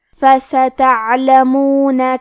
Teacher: کلمت فستعلمون میں حرف العین پہ جزم ہے، لہذا ہمیں عین کو ظاہر کرنا ہے